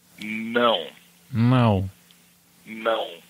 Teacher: It's very nasal, so you almost have to say it through your nose